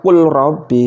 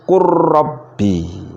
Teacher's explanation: Ketika lamnya sukun, lamnya mati dan ra-nya hidup, harus dimasukkan ke ra, dibaca kur, jangan dibaca kul robbi, masuk kurrobbi ya.